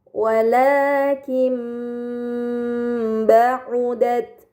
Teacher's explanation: Kemudian pada kata wakim ba'at terdapat nun sukun bertemu dengan huruf ba ini dinamakan iqlab. Maka nun sukun dibaca mim dengan gunah yang dipanjangkan